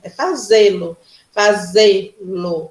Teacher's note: Você bota uma tonicidade, você bota uma força no Z, no E. Então, e é um som aberto, fechado, E.